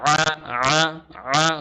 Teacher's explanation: অপরদিকে আইনের উচ্চারণটা হবে আ গলার ভেতর থেকে